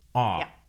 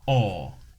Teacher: the American O sound is an unrounded vowel. O, while the British O sound is rounded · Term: O sounds